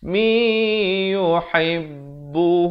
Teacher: Biqaumi idgham bi gunnah, masuk beserta dengung 2 harakat.